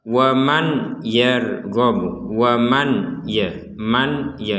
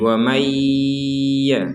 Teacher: kita harus memasukkan Nun ini kepada huruf ya disertai dengan dengungan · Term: disertai dengungan